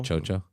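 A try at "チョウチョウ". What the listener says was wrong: No, I don't think it's with a pronounced CH like you're saying it. Chojo. Chojo.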